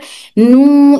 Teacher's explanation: यहां से और नाक में से आवाज आती है नून की नून की आवाज नाक से भी अदा होती है